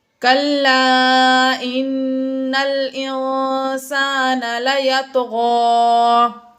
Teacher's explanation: نون مشدد ہے یہاں پر اس لیے ہم نے غنہ کیا